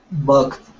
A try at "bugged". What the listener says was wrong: Okay, very good.